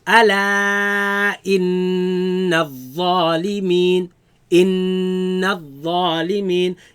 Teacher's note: You recognize there's a nun shadda, mim shadda, and you make a ghunna on that.